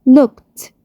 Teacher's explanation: زي ما اتفقنا ان لو اخر فعل صوت voiceless لازم أشوف voiceless sound زيه واللي هو من نفس العيلة صوت ت sound. الفعل look آخره ك sound اللي هو voiceless sound. أضيف إيدي، الإيدي هتتحول ت sound